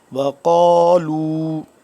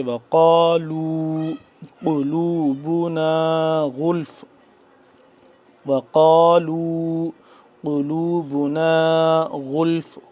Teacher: وقالوا قاف الف زبر قا موٹا پڑھیں گے